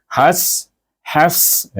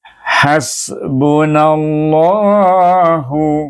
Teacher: Allah itu jadi tebal bacanya dan 2 harakah